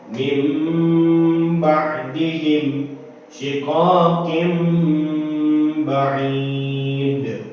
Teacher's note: Nah, di sini ada penjelasannya bahwasanya apabila nun sukun atau tanwin berhadapan dengan huruf ba, maka suara nun sukun atau tanwin ditukar dengan suara mim dan harus dibaca dengung selama satu setengah alif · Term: iqlab